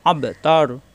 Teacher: লাস্টের হরফে সাকিন হয়ে যাবে, তা মিলবে রয়ের সাথে, তর র মোটা হয়ে যাবে